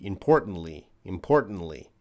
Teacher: i think it's a reduced t sound